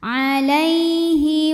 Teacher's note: Ada huruf lin sebab ada ya sukun sebelumnya baris fathah, maka dibacanya lembut atau lunak.